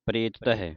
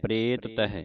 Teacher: ਇਸ ਤਰਾਂ ਪੜਨਾ ਹੈ ਕਿ ਦੋਨੇ ਤੱਤੇ ਉਚਾਰਨ ਹੋਣ